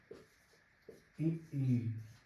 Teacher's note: ई जब ई आप बोलते हैं तो आपके ओठ थोड़े थोड़े दोनों तरफ खिंचते हैं। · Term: प्रसरित